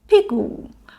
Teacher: P, strong and falling, plus gu, light and short. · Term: falling tone